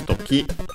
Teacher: accented on the ki, on the last syllable